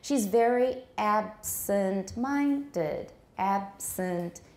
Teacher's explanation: you can still hear the other stress on ab